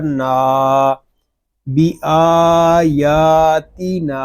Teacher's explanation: نون الف زبر نا، بی آیاتی نا. یہاں نون کو بھی ہم ایک الف تک کھینچ کر پڑھیں گے کیونکہ نون آگے یہاں پہ الف مدہ ہو رہا ہے. الف مدہ اس لیے ہو رہا ہے کہ الف سے پہلے زبر آ گیا ہے.